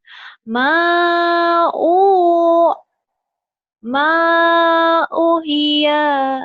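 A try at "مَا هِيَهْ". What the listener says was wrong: U-nya panjang. Ma'uhiya. Jadi madlin ya, panjang.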